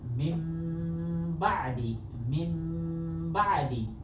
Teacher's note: দেখেন এখানে দেখেন নুন সাকিন দেখতে পাচ্ছি আমরা, তারপরে কি চলে এসেছে, বা, তাহলে আমরা এটাকে কি পড়ব, নুন সাকিনকে মিম সাকিনে পরিবর্তন করে পড়ব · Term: ইকলাব